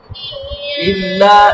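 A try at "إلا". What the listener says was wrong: টান দাও বেশি করে দাও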